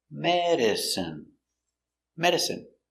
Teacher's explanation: stress on the first syllable medicine medicine